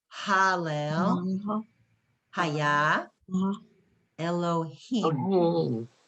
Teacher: It's an aspirate. It's just a breathy H, just like an H. So it's Hallel, Haya, Elohim.